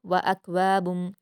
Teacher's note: यहाँ भी व अकवाबुम में आप ख्याल रखिए कि छोटी काफ दी हुई है तो इसलिए बिना कलकला के हम मिलाकर पढ़ेंगे